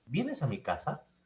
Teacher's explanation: en el segundo vienes a mi casa se conoce como inflexión tonal ascendente